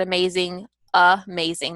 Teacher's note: Like in the word amazing, amazing, the first part, the A is not a true A production like or A, but it's it's the schwa sound.